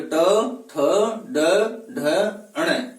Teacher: ट वर्ग का उच्चारण स्थान मूर्धा होता है। इन वर्णों का उच्चारण करते समय जिह्वा मूर्धा से स्पर्श करती है।